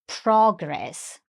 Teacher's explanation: Again, with the stress on the first syllable